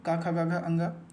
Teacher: तो कंठ से हमारा आ क वर्ग क, ख, ग घ ये बोला जाता है